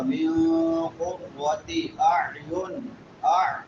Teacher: عین حمزہ نہیں پڑھنا یہاں پہ عین پڑھنی ہے · نون ساکن ہے اور نون ساکن کے بعد حروف اخفاء میں سے قاف ہے تو یہاں پہ اخفاء ہوگا